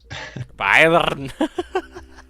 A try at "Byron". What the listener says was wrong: You did the R in the wrong place.